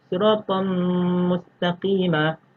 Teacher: Dia dinamakan idgham kamil kerana tiada kesan suara nun mati apabila kita menyebutnya. Yang jelas kedengaran hanyalah suara huruf-huruf idgham.